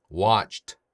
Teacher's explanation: 안 울리죠? 이렇게 마지막 소리가 성대가 울리지 않는 무성음으로 끝나는 동사에 ed가 붙어서 과거형이 되는 경우에는 같은 무성음인 t로 발음을 해줘요